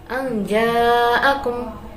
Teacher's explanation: terdapat bacaan ikhfa hakiki sebab nun sukun bertemu dengan huruf jim